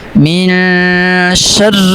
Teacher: اب اس آیت کے شروع میں میم زیر نون من یہاں پہ اخفا ہو رہا ہے، ایک الف کے برابر یہاں پہ اخفا کر کے پڑھیں گے